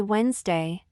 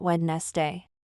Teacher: the D sound in the middle is silent